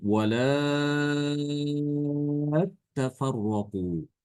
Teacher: Ya, dan sebagaimana tadi telah kita sampaikan bahwasanya Imam Al-Bazzi apabila ada huruf ta yang ada pada fiil, ada double ya, tanya, maka ta yang pertama itu diidghamkan. Ya, diidghamkan ke dalam ta yang kedua. Ya, namanya idgham berarti dia tanya itu menjadi sukun dan diidghamkan, dileburkan, ditasdidkan.